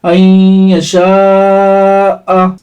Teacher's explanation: حروف مدہ کے بعد حمزہ اسی کلمے میں ہے تو یہ مد متصل ہوگا، اس کو 4-5 الف کے برابر کھینچ کر پڑھیں گے